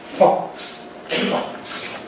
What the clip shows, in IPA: fɒks